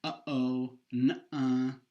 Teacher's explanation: That's a glottal stop that you're producing there. It's just the stop. The sound just stops.